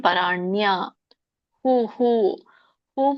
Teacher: ಯಾವುದು ಸ್ವರ ಕೂಡಿರುತ್ತೋ ಅದೇ ಸ್ವರದ ಉಚ್ಚಾರಣೆ ಇಲ್ಲಿ ವಿಸರ್ಗಕ್ಕೆ ಆಗುತ್ತೆ